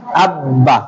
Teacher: তাসদীদযুক্ত অক্ষরটি যে দুইবার উচ্চারিত হয়